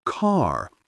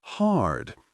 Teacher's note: Many Americans today still say the short a sound in words like grass, similar to how it was said in England before the 1800s. Most Americans also pronounce the R sound at the end of words